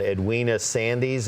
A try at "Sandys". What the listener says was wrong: The silent Y, Sands.